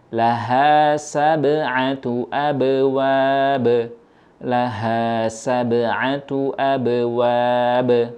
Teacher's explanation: ketika huruf ba sukun didahului huruf berharakat fathah kondisi ba tetap diam pada tempat keluarnya tidak terpengaruh Ab.